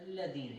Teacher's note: جب ہم پڑھتے ہیں الذین, اس میں ہونٹ گول نہیں ہوتا. اس میں جو غلطی ہو جاتی ہے وہ یہی ہے کہ ہمارے ہاں یہ پایا جاتا ہے کہ کسی حروف کو موٹا پڑھنے کا مقصد یہ ہے کہ آپ نے اس کو گول کرے پڑھنا.